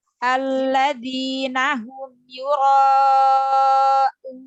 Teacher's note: nun sukunnya karena wakof ya, itu mempunyai sifat tawassut. Jadi dialirkan sedikit suaranya, jangan langsung ditahan.